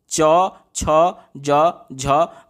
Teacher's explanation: आपकी जिह्वा जो है वो आपके तालु को टच करते हुए महसूस होगी